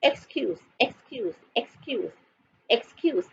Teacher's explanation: The S sounds like a Z.